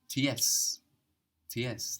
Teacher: Zeds in German are pronounced TS TS that's the pronunciation of a zed sound in German